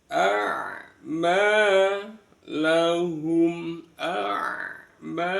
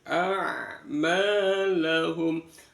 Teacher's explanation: ain terletak di tenggorokan tengah, biarkan mengalir bunyi ain, bukan ma, lahum.